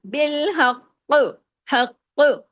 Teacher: اس پر تشدید ہے، ڈبل قاف ہے تو ڈبل قاف کی آواز آنی چاہیے. اور چوتھا یہ کہ جب ہم اس کی زیر کو روک رہے ہیں تو کلکلا بھی ہوگا.